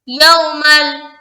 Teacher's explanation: ناک میں آواز کو روکنا نہیں ہے، بالکل سمپل طریقے سے ملا کر گزر جانا ہے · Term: ادغام تام